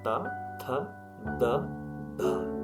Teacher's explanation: जिब्राको टुप्पोले माथिल्लो दाँतको सहायताले उच्चारित हुने वर्णहरू दन्त्य वर्णहरू हुन्।